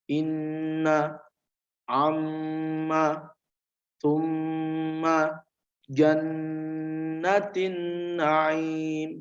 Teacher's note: wajib dibaca hunah sepanjang dua harokat atau satu Alif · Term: ghunnah musyaddadah